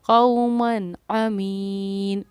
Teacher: کسی طرح کا غنہ نہیں کیا، اخفا نہیں کیا، سمپل میں نون کو ظاہر کیا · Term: اظہار